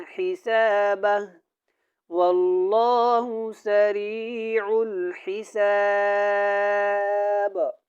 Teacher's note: یہاں پہ کلکلا ہوگا با جب ساکن ہوگی